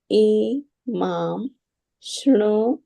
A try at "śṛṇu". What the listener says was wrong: Not Shra, Shri.